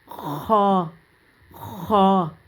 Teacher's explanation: خا جو ہے وہ گلے کے حلق کے ابتدائی حصے سے ادا ہوتا ہے، اور اس میں یہ ہوتا ہے کہ جہاں پہ نا آپ کا وہ ایک گوشت کا ٹکڑا لٹک رہا ہے نا، وہاں سے یہ ادا ہوتا ہے خا خا۔